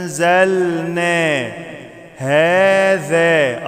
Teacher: أنزلنا، أنزلنا هذا، أطلع لساني في الذال